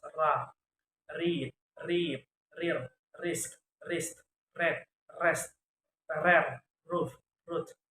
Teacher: Voice alveolar approximant sound ra, read, reap